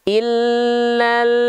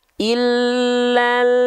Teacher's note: Kenapa ada bunyi pantulan ketika kita melafalkan lam sukun? Karena lidah kita keburu makhraj lamnya, keburu turun duluan. Sedangkan huruf berikutnya belum kita lafalkan.